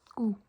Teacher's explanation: The D is not pronounced